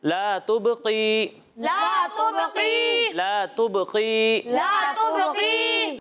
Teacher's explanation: यहाँ पर आपने कॉफ को बारीक पढ़ा है, इसे बारीक नहीं पढ़ना, पुर पढ़ना है। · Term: कॉफ को पुर